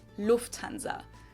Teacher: English people usually say Lanza but in German we say Lanza so the emphasis on the first syllable